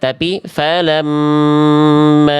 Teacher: Ya, dengung dan ditahan 2 harokat. Bunda tadi nggak ditahan, alias Bunda dibacanya tergesa-gesa, tidak ditahan tuh. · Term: mim tasdid